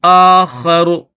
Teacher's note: اس را کے اوپر جو زبر ہے اس زبر کو نہیں پڑھیں گے بلکہ را کو جزم کے ساتھ پڑھیں گے